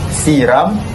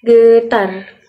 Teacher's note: Antaranya adalah lidah di bahagian atas gusi. Hujung lidah ni berada di bahagian atas gusi supaya dapat menghasilkan bunyi getaran R. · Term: konsonan getaran